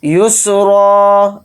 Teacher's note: یا کو سین ساکن کے ساتھ ملا کر پڑھیں گے اور حالت وقف میں را کے اوپر دو زبر نہیں پڑھے جائیں گے، را الف کے ساتھ ایک زبر لگا کر پڑھیں گے